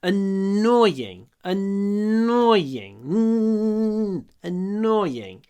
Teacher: Когда я говорю annoying, кстати, намного больше «н».